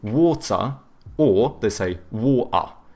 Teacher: Whereas like the British, they tend to have either hard T's or they do like the glottal T, so but then they do a schwa instead of pronouncing the R